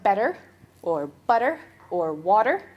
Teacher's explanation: Um, t flapping, so better or butter or water. That middle t sounds more like a duh in my accent.